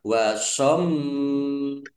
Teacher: Mim domah wawu sukun mat tobi'i panjang 2 harokat. Wasommu mim tasdid bacaan gunnah atau mendengung, dibaca mendengung, ditahan biar tampak mendengungnya. Wasommu mim domah wawu sukun mat tobi'i panjang 2 harokat.